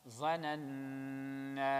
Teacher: again nun mushaddad غنة and alif will be stretched